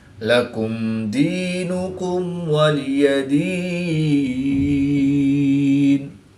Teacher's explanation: یا ساکن سے پہلے زیر ہے تو یا مدہ 1 الف یعنی 2 حرکات کے برابر کھینچ کر پڑھیں گے